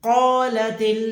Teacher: قالت کاف کو موٹا پڑھیں گے، حروف مستعلیہ میں سے ہے، یعنی کہ موٹے حروف میں سے ہے. قو لام زبر لا، قال تا کی زیر لام کی جزم سے ملے گی، اور اس جو لا ہے اس کو کھینچنا نہیں ہے، یہ جو لا ہے اس کو کھینچنا نہیں ہے.